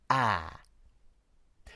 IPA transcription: æː